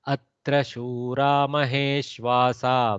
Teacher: one more type of Visarga Sandhi where the Visarga has elided under the presence of this soft Makara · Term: lopa of Visarga